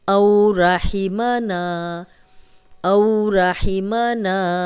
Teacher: جزم والی واو پیچھے حمزہ پہ زبر تو لمبا ہونے سے بچائیں گے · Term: واو لین